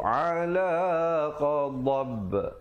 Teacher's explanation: Dab ada pantulan di situ, qalqalah kubra